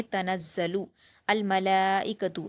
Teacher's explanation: حروف قمری میں سے میم آیا ہے اس لیے لام کے پیش کی حرکت کو الملائکتو کے لام کے جزم سے ملا دیں گے